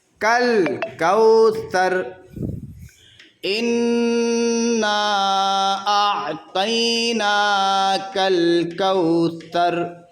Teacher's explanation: اب یہاں پر آیت ہے تو یہاں پر وقف کرنا ہے، تو وقف کرتے وقت اس را کو جزم دیں گے اور سا سے را کو ملائیں گے